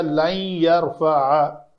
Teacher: اس لن نے آ کر یرفع کر دیا, لن یرفع, تو نون کے ساتھ یہاں پہ ایک تجوید کے کلیے کے مطابق نون ساکن کے بعد اگر حروف یرملون میں سے یا آ جائے تو اس نون کا اس یا کے اندر ادغام ہوتا ہے. تو جب ادغام ہوگا تو یا مشدد ظاہر ہوگی, تو یہاں پہ ایک تشدید بھی آتی ہے, تو یہ لفظ بن جائے گا لن یرفع.